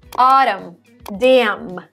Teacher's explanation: When N comes after M at the end of the word, you don't pronounce the N.